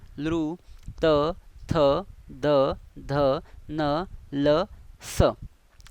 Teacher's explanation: दात. म्हणजे ज्या वर्णांचा उच्चार करताना दातांना स्पर्श होतो ते म्हणजे दंत्यवर्ण